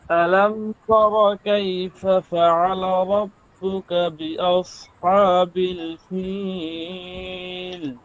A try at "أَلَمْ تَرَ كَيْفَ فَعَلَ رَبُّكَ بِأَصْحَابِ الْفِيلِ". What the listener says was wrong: সেটা হচ্ছে কণ্ঠটা একটু মোটার দিকে ধাবিত হয়, ঠিক আছে? কণ্ঠটা একটু মোটার দিকে ধাবিত হয়, অর্থাৎ পাতলা হরফগুলো মোটা হইয়া যাইতেছে হালকা হালকা। যেমন আলাম তারা কাইফা ফাআলা রাব্বুকা বিআসহাবিল ফিল, এরকম একটু গম্ভীর গম্ভীর আওয়াজটা আসতেছে। আমি যেরকম করতেছি, যেরকম দেখাইলাম, এতটা না, এর চেয়ে একটু কম, ঠিক আছে? তো এইটাই আপনি দূর করবেন, হ্যাঁ?